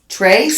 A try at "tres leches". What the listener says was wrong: Tres. You're saying trace, and it's tres. You say like an sound. So the E, the E in Spanish is You don't go E. Or A.